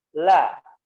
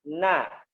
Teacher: Kalau la ya di torf lisan ya, di mana torf ya, di ya tepi ya, di ujung ya, ujung permukaan lidah ya, ujung luarnya, sisi luar ya, disentuhkan ke gigi la. Kemudian kalau na ke gusinya na, la, na ya, jangan terlalu ke dalam lo ya, nggak boleh ulu tidak boleh ke gigi ulu, seperti itu ya.